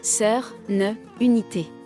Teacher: el francés tiene vocales centrales como sœur, ne, unité, que no existen ni en inglés ni en otras lenguas románicas